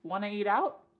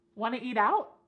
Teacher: we could cut off that first word y completely and just say want to eat out